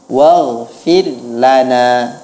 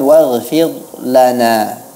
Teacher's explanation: Kemudian pada kata waghfir lana, ra-nya, siyogianya dibaca dengan tipis. Waghfir lana, bukan waghfir lana.